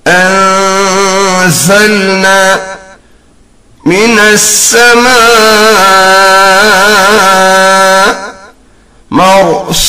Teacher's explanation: There are 3 letters pronounced from this makhraj or position of emanating sound, that is Za, Seen, Sod. A whistling sound should be felt when pronounced as Anzalna min as-samaa marsus.